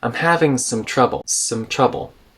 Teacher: Some is kind of reduced and connected to the word trouble here.